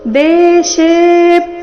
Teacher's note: ಶೆ ದೀರ್ಘ ಬಂದು ಅದರ ಮೇಲೆ ಆಘಾತ ಬರಬೇಕು